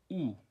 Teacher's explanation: 으에서 입술을 그대로 말아주는 거예요.